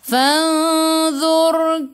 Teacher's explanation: Fanzur, ra sebelum ra ada baris depan, kena baca dengan tebal, lidah naik ke atas · Kai masuk ke dalam ya, ada sukun sebelum ya, baris atas, bacaan lin, bacaannya lembut. Kaifa ka, fa fi, fu gigi atas menyentuh perut bibir bawah.